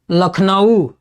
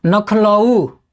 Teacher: भोजपुरी में वर्ण विपर्यय की भी प्रवृत्ति पाई जाती है